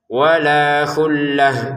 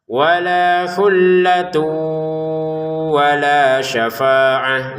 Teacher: Walanya dibaca dua harakat. Kata khullatun kita baca khullah ini menjadi huruf ha karena berhenti